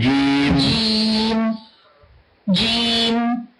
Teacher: اقول جيم فقط حركتين